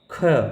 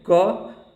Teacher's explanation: ख में आपका क की अपेक्षा ज़्यादा हवा निकल रहा है तो ये आपका महाप्राण हो गया